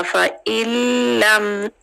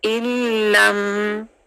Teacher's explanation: वो नून 100% मर्ज हो जाता है लाम के अंदर और अपनी साउंड खत्म हो जाता है। फ़इन से बन जाएगा फ़इल्लम, इल, अलिफ जो है वो डायरेक्ट लाम से मिल जाएगा, इल्लम। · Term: नून साकिन